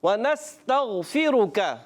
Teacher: غین میں کلکلا نہیں کرنا، را کو پر رکھنا ہے، کاف کو باریک